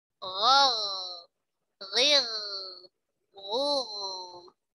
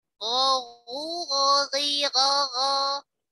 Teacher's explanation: akar lidah bertemu dengan al-hanaku al-lahmi, bertemu dengan langit-langit daging yang lunak yang berwarna merah. Gha agak ke dalam, kalau kha agak ke depan ya, agak ke atas. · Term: ghain